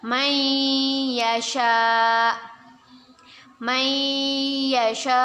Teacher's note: nun sukun bertemu dengan huruf ya hukum bacaannya ialah Idgham Bighunnah kita baca dengan berdengung dan kita tahan dua harokat